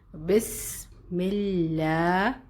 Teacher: مل اب شدہ کی جو مضبوطی کا خیال رکھنا ہے, اور میم کے نیچے زیر ہے, کسرہ ہے, تو ہمیں لام باریک پڑھنا ہے